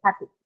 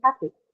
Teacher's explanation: the e sound that you hear in happy it is so short and so indistinct that you can't even hear it properly